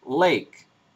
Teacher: we don't have lateral fricatives in English, and we have a lateral approximant, for example, on the word lake.